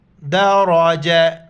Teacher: یہ وقف کی حالت میں یہ جو گول تا ہے ہاں میں تبدیل ہو جاتا ہے